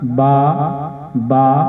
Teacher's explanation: देखिए शफा कहते हैं होंठ को, तो ये दोनों होंठों के मिलने से अदा होता है, यानी कि बा को अदा करते वक्त दोनों होंठों का इस्तेमाल होता है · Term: हरूफे शफविया